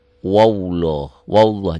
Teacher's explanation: Itulah yang dikatakan waqaf isyarah, mengisyaratkan ada dua huruf yang matinya sekarang. Wallah, lafaz Allahnya dibaca tebal, kenapa tebal? Tafkhim, taglid, karena sebelum lafaz Allah baris di atas.